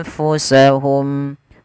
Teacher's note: wakinu anfusahum ada nun mati ketemu Fa ada bacaan Ikhfa kemudian samarkan huruf nunnya kepada huruf Fa sambil ditahan anfusahum Fu alirkan nafas sifat hamasnya mengalirnya nafas Hum yadlimun huruf